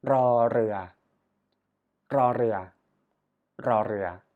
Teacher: Yeah, we practice a tongue trill for this letter.